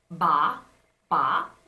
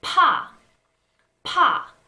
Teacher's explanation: So when you say ba, there isn't that strong burst of air, but when you say pa, you will feel the strong burst of air on your hand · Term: aspiration